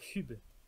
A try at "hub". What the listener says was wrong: compris FUB parce que t'as un petit peu forcé sur la prononciation, mais ça va. Non mais Hub, c'est un japonais qui a grandi en France qui essaie de dire Hub et qui sait pas que c'est censé être Hub.